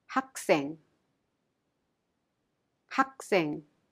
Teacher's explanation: Thus, the syllable that follows is impacted. The 시옷 in 생 is pronounced in a strong sound like 학생. · There is a final consonant 기역 in 학 and this final consonant temporarily holds the sound and breaks it in order to make a sound. Thus, the syllable that follows is impacted.